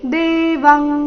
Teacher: ಇಲ್ಲಿ ಅನುಸ್ವಾರದ ಉಚ್ಚಾರಣೆ ಕ ವರ್ಗದ ಅನುನಾಸಿಕದ ರೀತಿ